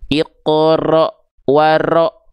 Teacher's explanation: huruf ro itu dilafalkan justru tidak terlalu banyak getarannya